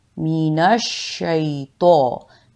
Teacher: जब भी तो के ऊपर ज़बर या खड़ा ज़बर आता है तो इसे मोटा और पुर पढ़ा जाता है। मीनश्शैतो, खींचना इसलिए है कि इसके ऊपर खड़ा ज़बर है।